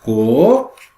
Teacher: Sílaba tônica é a última, sílaba forte. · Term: oxítona